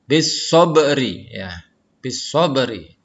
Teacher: huruf ba-nya memantul, membalik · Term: qalqalah sugro